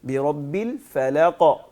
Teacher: ایک تو اس کو موٹی آواز میں پڑھنا ہے, جی, اس میں زبان کی جڑ کو اوپر اٹھاتے ہوئے پڑھیں گے, اور دوسرا اس میں آواز کو ہلانا ہے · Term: کلکلا